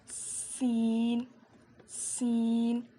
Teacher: زبان کی نوک کو نیچے کے 2 دانتوں کی جڑ میں لگانے سے سین ادا ہوتا ہے